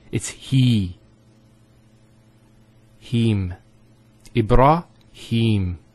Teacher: So here there's an elongation of the E sound. It's he. Him.